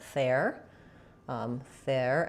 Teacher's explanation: It's a voiceless TH, not a there, but ther.